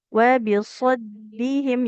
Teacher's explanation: Yang ditekan huruf dalnya, tidak huruf shad.